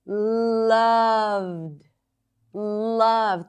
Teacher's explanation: She goes higher in pitch, and she loved the ocean. And she stretches it not only by elongating the vowel, but also elongating the consonants.